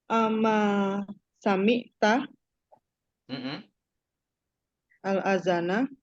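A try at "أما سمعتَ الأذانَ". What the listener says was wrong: Masya Allah.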